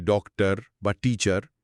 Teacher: ডক্টর শব্দের শেষের অর বা টিচার শব্দের ইয়ার অংশ দুটোই আসলে শোয়া। আমরা বলি ডক্টর বা টিচার, ওই শেষের অংশটা প্রায় শোনাই যায় না। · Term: শোয়া সাউন্ড